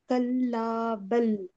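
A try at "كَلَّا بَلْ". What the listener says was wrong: आपने तो इतनी सांस रोक रोक दी, सांस सांस को रोकना है ना, उसके आगे भी तो बढ़ना है ना।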